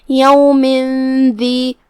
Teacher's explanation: दाल हरूफ इख्फा में से है तो यहाँ भी हुक्म इख्फा हुआ, तो हम तनवीन को बगैर जाहिर किए हुए और गुन्ना के साथ ये हुक्म को अदा करेंगे। यौमिन दी हर्फ दाल की अदायगी ज़बान के सर और ऊपर वाले दांतों के अंदरूनी किनारों से है, तो हम उसे वहीं से अदा करेंगे।